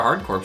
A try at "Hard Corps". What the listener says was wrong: Hardcore. We've been told by numerous people it's hardcore. No S, no P.